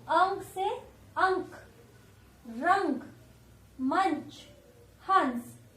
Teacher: तो इसमें आपको हल्का सा न का साउंड सुनाई दे रहा होगा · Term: अनुस्वार